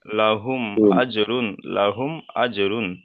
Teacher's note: মিম সাকিনের পরে বা অথবা মিম ছাড়া অন্য অক্ষর এসছে অর্থাৎ হামজা এসছে তাই মিম সাকিনকে বিনা গন্নায় জাহির করে পড়তে হবে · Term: ইজহারে শাফাবি